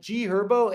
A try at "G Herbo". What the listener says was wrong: It's also G Herbo. The H is silent, bro. The H is silent. It's G Herbo.